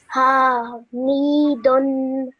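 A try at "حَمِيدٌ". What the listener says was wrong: Make sure you don't stretch the ha sound out for too long because it's a simple fatha. 1 second. Hamidun.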